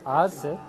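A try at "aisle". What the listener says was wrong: Isle. There's no S pronunciation. Like island, no S. Isle. Isle. The spelling is a little strange, but it's Isle.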